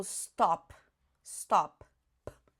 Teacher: Você vê que não sai nem voz quando você faz p, p. Não tem voz, é desvozeado por causa disso.